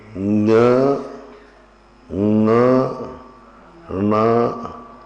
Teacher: जब उच्चारण करेंगे तो उच्चारण को जब एंड करेंगे तो नासिका पे जोर आएगा, इसलिए इनको अनुनासिक बोलते हैं